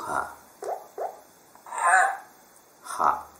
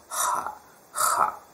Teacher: bukan h seperti h Latin sebenarnya, tapi h, ada guttural sound, suara tenggorokan